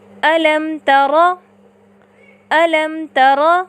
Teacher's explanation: میم ساکنہ کی آواز کو ظاہر کر کے پڑھتے ہیں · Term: اظہار شفوی